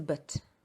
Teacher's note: But the weak form is but. You don't highlight the central vowel.